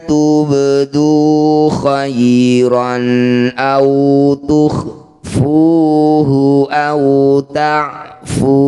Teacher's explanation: Bak sukun di tengah bacaan disebut qalqalah sugro. Pantulkan, pantulannya kecil saja.